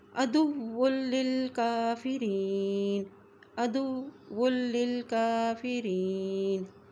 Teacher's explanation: کاف کے اوپر کھڑا زبر ہے، اس کو ایک حرکت لمبا ادا کریں گے